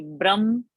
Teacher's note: So it is no bha, it is ba alpa prana, and it is ha ending. So it should be Brahma.